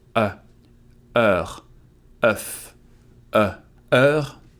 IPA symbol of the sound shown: œ